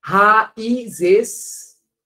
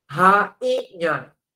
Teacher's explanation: Por que o I do rainha é nasal? Porque esse som do N, ele nasalizou o I.